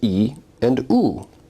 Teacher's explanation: if you say these vowels in succession you may notice that your tongue is moving forward and backward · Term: backness